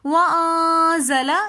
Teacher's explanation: وَأَنزَلَ میں نون ساکن کے بعد اخفا کے 15 حروفوں میں سے زا آ رہا ہے تو اس لیے ہم وَأَنزَلَ یہاں پر غنہ کریں گے